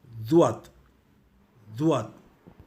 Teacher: இந்த எழுத்தை உச்சரிக்க முதலில் உங்களுடைய நாவின் நுனியை உங்களின் மேல் இடது அல்லது வலது சிங்கப்பல்லில் வைக்க வேண்டும் · நாம் உச்சரிக்கும் பொழுது ZUAAD துவாத் என்று உச்சரிப்போம். ஆனால் கேட்போருக்கு அது DUAAD துவாத் என்று கேட்கும். இதற்கு ஒரே காரணம் மேல் சிங்கப்பல் நாவின் நிலைப்பாடுதான். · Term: canine teeth tongue position